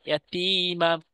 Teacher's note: তা ইয়া জের এক আলিফ টেনে পড়তে হবে